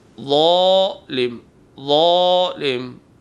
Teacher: مثلا لفظ ظالم ہم ادا کرنا چاہیں گے، زوئے سے ادا کرنا چاہیں گے تو آواز کو بھاری کریں گے بغیر سیٹی کے، زبان کی نوک اوپر کے دانتوں کے کنارے پہ لگائیں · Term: زوئے کی آواز